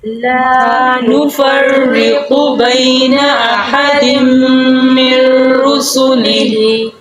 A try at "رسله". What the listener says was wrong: रुसुलिही नहीं पढ़ना रुसुली